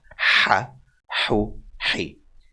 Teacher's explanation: This is the sound of the ha. The ha, it's the more breathy sound. Ha. Actually, the airways will be tighter to make this sound.